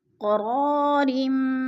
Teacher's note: را 2 زیر میم ریم ادغام ہو رہا ہے، سختی سے جما کر پڑھیں گے